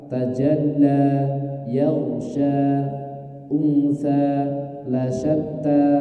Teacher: Sebagaimana yang kita sampaikan di pertemuan sebelumnya tentang surat Duha, dan juga di surah Al-Lail, akhir-akhir dari ayat-ayat ini juga sama, memiliki hukum idgham, memiliki hukum mad tabi'i. Tidak boleh dibaca lebih dari 2 harokat.